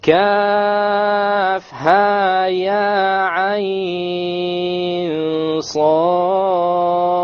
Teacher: Ayn is 6 with the ikhfa, with the ghunna, and then the sad has the qalqala. Okay. The ayn is considered a madlin, but we'll do it 6.